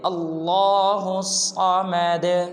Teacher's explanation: اب اس میں دیکھیں کہ ہا کے بعد الف بھی کھڑا ہے، اس کے بعد لام بھی کھڑا ہے، اس کے بعد آگے صاد ہے اور صاد مشدد ہے، تو لہٰذا ہم ہا کو صاد کے ساتھ ملائیں گے۔ الف بھی نہیں پڑھیں گے، لام بھی نہیں پڑھیں گے